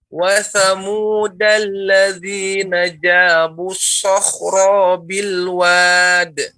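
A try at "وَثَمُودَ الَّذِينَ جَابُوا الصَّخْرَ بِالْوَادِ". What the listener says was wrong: Ro pendek.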